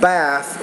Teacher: bath which is a voiceless interdental consonant so the vowel is shorter when you say bath